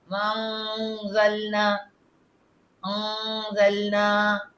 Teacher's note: نون کا جو اخفا غنہ آ رہا ہے تو ہم تھوڑا سا رکیں گے